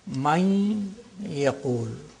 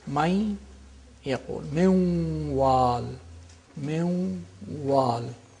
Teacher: With the nasal quality of the noon is retained, and there is idgham, which is naqis, which is incomplete idgham.